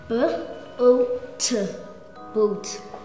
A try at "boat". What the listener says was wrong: I think you were a bit too heavy on the T. Let me hear it again.